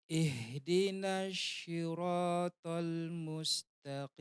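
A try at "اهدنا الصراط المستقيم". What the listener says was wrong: Bukan shin ya. Ihdinas sli. Yang digunakan kalau huruf shad itu ujung lidahnya ketemu dengan gusi gigi seri bawah. Nah, bukan yang digunakan tengah lidah. Kalau shin itu tengah lidah ya, ash ya. Ini fokusnya di ujung lidah yang disentuhkan kepada tadi apa? Gigi seri bawah. Iya, coba gusi gigi seri bawah.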